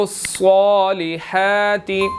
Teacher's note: صاد جو ہے وہ موٹا ہے، اس کے اوپر کھڑی زبر بھی ہے، 1 سیکنڈ اس کو لمبا بھی کرنا ہے اور موٹا بھی ادا کرنا ہے